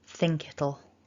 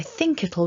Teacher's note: noticed there's a little bit of linking there think it'll so the k kind of hops across